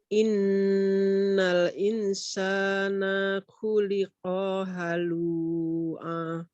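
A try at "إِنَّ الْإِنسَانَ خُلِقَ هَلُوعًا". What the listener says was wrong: Insanya ditahan. Sama dengan inna. Innal insana. Innal insana. Lu-nya 2 saja. A juga sama 2 ya. Nah, itu A tanwin ya. Jadi kalau ada tanwin begitu dibaca 1. Khuliqa halu'a. Khuliqa halu'a. Halu'a. Lu sama A sama. Khuliqa halu'a.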